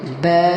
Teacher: الف ساکن کے ایگزامپل، با الف زبر، با الف ساکن ہے، الف سے پہلے زبر ہے، اس کو ایک الف کے برابر کھینچیں گے